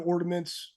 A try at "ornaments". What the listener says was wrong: I think you threw a D in there